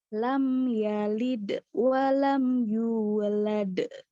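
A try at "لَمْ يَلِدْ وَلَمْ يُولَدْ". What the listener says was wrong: Nah, ini mutus nih. Jadi bedanya sugro sama kubro itu mutus apa enggak? Kubro mutus.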